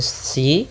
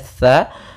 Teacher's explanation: Si jangan dibaca dengan si, tapi dia tha. Makhrajnya adalah ujung lidah menempel dengan gigi seri atas.